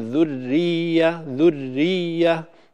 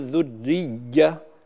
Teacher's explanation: الياء ليس حرفا شديدا ينقطع فيه الصوت والنفس، إنما هو حرف رخو مجهور، يعني ينقطع فيه النفس لكن لا ينقطع فيه الصوت، فنقول ذرية ذرية ولا نقول ذرية كأنه حصل فيه قطع للصوت، أو هكذا بدأ لي الصوت كأنه انقطع في الياء.